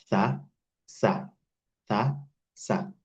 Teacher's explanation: Sin, also here, it's like a little bit stronger than, it's a little bit heavier than the Sa. Sa is light. You have your tongue between your teeth.